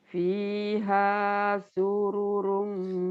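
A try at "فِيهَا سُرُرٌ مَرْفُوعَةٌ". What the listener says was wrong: Surum surum jangan panjang. Fiha sururum sururum marfu'ah.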